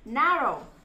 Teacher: chúng ta sẽ đọc rõ và mạnh cái âm na hơn cái âm row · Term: trọng âm